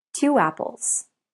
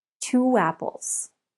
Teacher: We link the sounds with w.